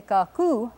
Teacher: when you call her you say Kaku with the accent on the second syllable